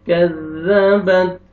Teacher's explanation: کاف کو باریک ادا کریں گے، زال کو بھی نرمی سے ادا کریں گے ، كذبت، تا کا لائٹ سے ساؤنڈ آئے گا، كذبت ثمود،